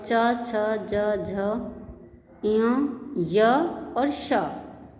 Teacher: च, छ, ज, झ य और श ये तालु से उच्चरित होने वाले वर्णों के अंतर्गत आते हैं